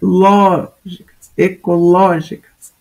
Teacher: ecológicas não é paroxítona ela é proparoxítona é a anti penúltima sílaba que é a tônica